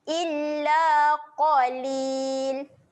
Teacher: huruf qaf, huruf yang tebal. Okey. Tebalkan bunyi dia, muncungkan mulut.